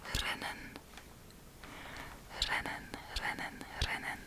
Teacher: we have the r rolling in the back of the throat um this really depends some people do it some people don't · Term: rolling R